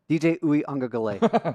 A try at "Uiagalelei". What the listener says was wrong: Yeah, you're pronouncing you made the mistake of pronouncing every letter. You're not supposed to.